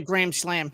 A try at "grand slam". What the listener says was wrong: No, you sound like you said gram slam, like the old